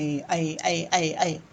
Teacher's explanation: ए की बात हो रही है, ए अंदर से आवाज आ रही है, ए कंठ भी है या तालव्य भी है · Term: कंठ तालव्य